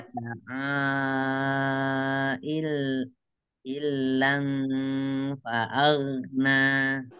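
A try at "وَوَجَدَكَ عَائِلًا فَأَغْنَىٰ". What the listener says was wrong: Alamnya tidak ditekan, dia tidak ada tasdid. iya, nggak ada tasdid, iya. Kurang ditambahkan dengannya wa wajadaka ilang fa'agna.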